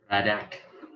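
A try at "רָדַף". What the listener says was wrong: Radaf with an F sound. That's the final he form. It looks very similar to the final kaf, but it has the little hook on it. Radaf.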